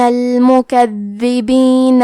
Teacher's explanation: حرف الدال کی ادائیگی زبان کے سر اور اوپر کے دانتوں کے اندرونی کناروں سے ہے. · حرف الدال پہ تشدید ہے، تو ہم 2 حرف کے برابر دال کو پڑھیں گے، اور کیونکہ تشدید زیر کا ہے تو ہمیں زیر کو بھی ظاہر کرنا ہے.